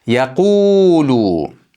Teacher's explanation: Mana dommalik va harakatsiz ikki harakat miqdori cho'zamiz. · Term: mad